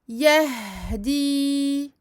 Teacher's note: Le ha, longue durée, écoulement du son.